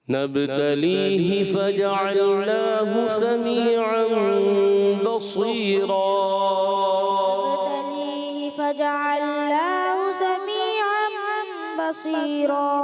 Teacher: ہا کی زیر کلیئر نہیں ہوتی، کمزور پڑتی ہے، کلیئر کرنی ہے